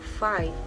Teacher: produced with the upper teeth and the lower lip